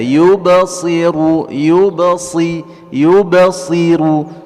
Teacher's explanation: qalqalah di sini di huruf ba tidak membuat saktah atau kita berhenti, yubsi, ya, tapi pantulannya ringan saja, yubasiru, yubasiru, ya, pantungannya ringan saja, tidak membuat berhenti atau saktah, ya.